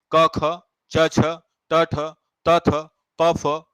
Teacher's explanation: शुरुआत के दो इनको बोलते समय हमारी स्वर तंत्रिकाओं में गूंज पैदा नहीं होता है